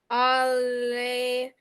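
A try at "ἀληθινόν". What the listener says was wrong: Very good. Perfect. Okay. So that's perfect.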